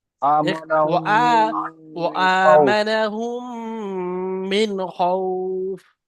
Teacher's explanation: খৌফ টান হবে, তিন আলিফ